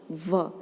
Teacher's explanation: जब हम व बोलते हैं तो देखिए हमारे होठ पर दांत टच हो रहे हैं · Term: दंतोष्टम